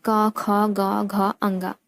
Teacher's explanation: कंठ से उच्चारित होने वाली ध्वनियाँ हैं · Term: कंठ ध्वनियाँ